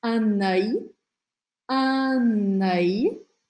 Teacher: eu grudo o som do N com o som do A, no começo dessa palavra